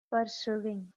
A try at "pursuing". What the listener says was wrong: Pursuing or pursuing? W is not there. Pursuing. Pursuing. Pursuing. Not pursuing. Pursuing.